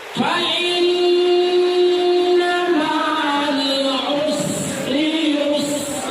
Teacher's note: Sin itu bukan qalqalah. Dia dialirkan dia.